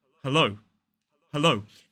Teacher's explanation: two syllables, stressed on the second syllable